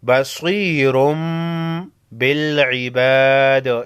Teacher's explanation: तनवीन के बाद बा है, तनवीन के नून को मीम में बदल कर गुन्ना के साथ पढ़ेंगे। बसीरुम बिल इबाद, इसको इक़लाब कहते हैं।